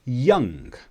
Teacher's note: we have this strange looking N sound that's not quite an N, it's not quite a G, it's somewhere between.